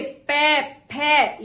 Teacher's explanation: इनका उच्चारण स्थान होगा ओष्ठ